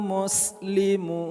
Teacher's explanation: Muslimun. Mu kita panjangkan 2 sampai dengan 6 harokat mad arid lis sukun.